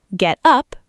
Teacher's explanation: Get up, verb, stress on up, equals wake up, stand up.